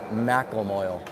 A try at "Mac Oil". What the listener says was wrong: There should be an A between the M and the C.